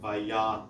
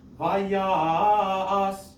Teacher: I might actually prolong that ya so that it gets one more musical note, and then do the as as the last syllable as an afterthought kind of thing.